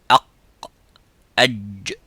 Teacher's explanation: So in the wasat al-lisan, which is the middle part of the tongue, the middle part touches the roof of the mouth, and the sound stops as exactly as the qaf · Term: jim